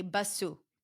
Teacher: you're adding a vowel sound at the end and you're changing the number of syllables. Instead of one syllable, it becomes two syllables. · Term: add sounds